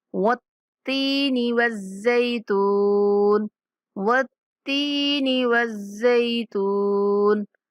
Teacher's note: تا کے اوپر تشدید ہے تو ہم نے تا کو سختی سے پڑھتے ہوئے یا مدہ ہونے کی وجہ سے تھوڑا لمبا کرنا ہے